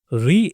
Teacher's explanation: मुर्दा मोह में तालू से थोड़ा आगे दांतों के पीछे का खुरदरा हिस्सा होता है। इस स्वर को बोलते समय जीभ थोड़ी मूर्धा की ओर जाती है। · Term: मुर्धन्य स्वर